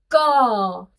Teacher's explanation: गले के अंदर से हमने भाग को ऊपर वाले तालु के साथ टच किया। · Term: व्यंजन